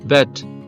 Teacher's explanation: అనేది front ఓవెల్ అన్నమాట అంటే ఫ్రంట్ అంటే ఫ్రంట్ క్లోజ్ మిడ్ అంటే టంగ్ ఫ్రంట్ కి ఉంటుంది హైట్ వచ్చేటప్పటికి మిడ్ కి క్లోజ్ కి మధ్యలో ఉంటుందన్నమాట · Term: ఫ్రంట్ క్లోజ్ మిడ్ ఓవెల్